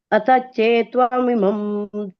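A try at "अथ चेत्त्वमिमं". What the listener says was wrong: ನೋಡಿ, ಇಲ್ಲಿ ತಕ್ಕೆ ತವತ್ತಿದೆ, ಹಾಗಾಗಿ ನಾವು ಎರಡು ಉಚ್ಚಾರಣೆ ಮಾಡ್ಲೇಬೇಕು. ಈಗ ಚೇತ ಅಂತಂದ್ರೆ ನಮ್ಗೆ ಅದು ಎರಡು ತ ಬರಲ್ಲ. ಚೇತತ್ವಂ ಅಂತ ಹೇಳ್ಬೇಕು. ಚೇತತ್ವಂ ಇಮಂ. ಚೇತತ್ವಂ ಇಮಂ.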